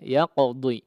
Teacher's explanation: huruf qaf yang diqalqalahkan